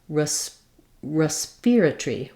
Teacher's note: Then in British English, they have one pronunciation that stresses on the spear syllable. I would actually, in the British dictionary, they mark ear with this little I-er, but I think of it as an ear vowel.